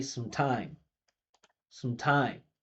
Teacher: When I say some, it's so obvious that I'm speaking because the vibration's here, but it's also so obvious that it's unstressed.